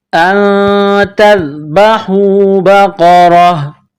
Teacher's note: جب یہاں سٹاپ کریں گے، وقف کریں گے تو گولتا کو ہا سے تبدیل کریں گے